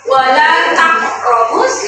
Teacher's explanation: huruf qalqalah qaf berharokat sukun, cara bacanya dipantulkan